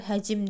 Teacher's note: tələffüz zamanı samitlərin arasına qapalı sait artırılır